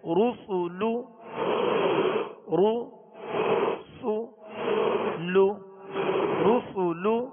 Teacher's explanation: پیش اس کا ادا کرتے ہوئے ہونٹوں کو گول ہی رکھیں گے